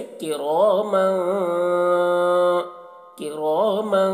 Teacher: سے کاف ہے، تو یہاں پر بھی اخفا ہوگا، یہاں پر تنوین کی آواز کو ناک میں چھپا کر ایک الف کی مقدار کھینچیں گے